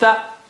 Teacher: Tha, that means you have to bring your tongue tip out. Tha, soft letter.